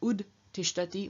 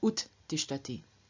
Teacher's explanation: we find the d, devoicing, losing its voice, in front of the unvoiced stop t. So instead of ud tishtati, we have ut tishtati.